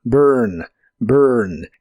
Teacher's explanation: se pronuncia casi como se escribe pero con tu lengua traída hacia atrás